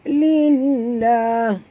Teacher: lam pada lafaz jalalah dibaca tipis kerana lam yang ini berbaris di bawah